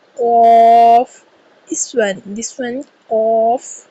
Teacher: قاف زبان کی جڑ اور تالو کے نرم حصے سے قاف کی ادائیگی کی جائے گی۔ قاف کو ہمیشہ پورا ادا کیا جائے گا